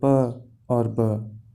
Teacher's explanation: मिसाल के तौर पर प और ब। पहले हम लोग अपने लिप्स को क्लोज करते हैं और फिर अचानक हवा के थोड़े से प्रेशर के साथ साउंड्स को प्रोड्यूस करते हैं